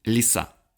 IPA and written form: lʲɪˈsa (лиса)